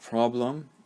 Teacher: in the second syllable of problem the schwa sound is used